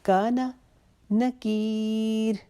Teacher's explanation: کا کو لمبا کریں گے ایک الف جتنا، نا کو نہیں کھینچیں گے